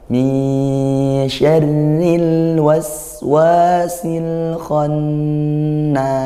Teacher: Sempurnakan huruf lam, kualitasnya sedang (bayniyyah). Jangan disentak. Jangan biarkan mengalir begitu saja